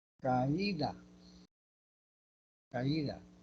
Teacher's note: Cerrada está después de la A, pero la fuerza de voz recae en la cerrada. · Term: hiato acentual